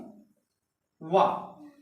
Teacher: वह दंत और ओष्ठ से दोनों से बोला जा रहा है दोस्तों, दंत प्लस ओष्ठ। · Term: दंतोष्ठ